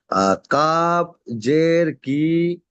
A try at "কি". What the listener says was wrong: হুম, কাব জের কি, একদম টান হবে না, কাব জের কি।